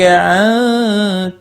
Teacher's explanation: نون ساکن کے بعد حروف اخفاء کا تا اخفاء حقیقی ہوگا